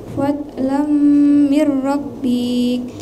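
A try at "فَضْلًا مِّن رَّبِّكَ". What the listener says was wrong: Nah, itu nggak boleh. Kenapa bik itu nggak boleh dipanjangkan? Karena bi itu tidak ada yang mati. Ya, jadi tidak semua di akhir itu, karena kita wakaf atau karena memang dia di akhir ayat itu dipanjangkan. Kalau dia tidak dipanjangkan, tidak boleh dipanjangkan.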